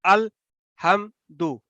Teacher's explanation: مخرج کے اوپر آپ کی آواز وہاں پہ ٹھہر جانی چاہیے میم ساکن کے اوپر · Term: اظہار